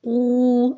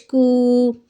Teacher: قاف الٹا پیش قو، ہم قاف دو نقطوں والا ہے اس کو موٹا کر کے پڑھیں گے اور یہ والا اسٹک والا کاف باریک پڑھا جائے گا